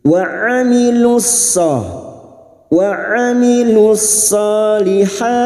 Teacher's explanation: Wa amilus solihat, alif kecil di atas 2 harakat kita panjangkan. Lihat bertemunya mad dengan huruf hidup yang dibaca wakaf, mad arid li sukun, 4 harakat kita panjangkan